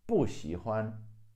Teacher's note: Most of the times, 不 is the fourth tone, unless the character after 不 is a fourth tone, then 不 becomes a second tone.